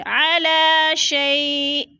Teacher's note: شیء، شیء یا ساکن سے پہلے شین کے اوپر زبر ہے تو ادھر جالین ہے، جالین کو ہم نے لمبا بھی نہیں کرنا اور جھٹکا بھی نہیں دینا، اور وقف کی صورت میں شیئن 2 زیر تنوین کو حمزہ ساکنہ میں بدل کر پڑھیں گے، یعنی تھوڑا سا جھٹکا دے کے پڑھیں گے